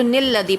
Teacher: اگر اس کو ہم پڑھیں گے ہجوں میں تو الذی پڑھیں گے، اور اگر رواں میں پڑھیں گے تو نلذی پڑھیں گے